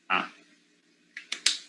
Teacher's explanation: It's a low back vowel.